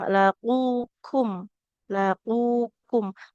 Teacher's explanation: Huruf qaf baru maju sedikit dia ada di huruf kaf. Jadi kalau qaf itu dia pangkal lidah kita nempel di langit-langit bagian yang lunak.